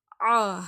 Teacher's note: ஹம்ஸா வந்து தொண்டையில இருந்து வரும். ஓகேங்களா இந்த இடத்துல இருந்து வரும்.